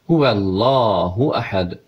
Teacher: qoşa L hərfidir, yəni bir səs sıxılaraq deyilməlidir